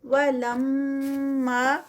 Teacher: لم پہ جو ہے وہ میم مشدد ہے تو یہاں پر میم کا غنہ ہوگا